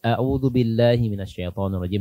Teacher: A'udzubillah ini hurufnya berbeda, hamzah dan ain harus dibedakan. Hamzah keluar dari tenggorokan yang paling bawah. Nah, kemudian ain tenggorokan tengah. Ini dari sisi makhraj sudah berbeda, belum lagi sifat-sifatnya, ya, belum lagi sifat-sifatnya.